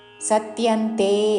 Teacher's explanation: సా మీద ఆఘాత అనుస్వారమ ఉచ్చారణ తే దీర్ఘము